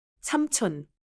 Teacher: The final sound in 삼 is a closed 미음 sound, then 촌 starts clearly.